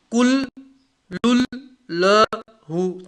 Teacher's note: تنوین کے بعد لام آیا تو تنوین کا لام میں ادغام ہوا اور گناہ نہیں ہوگا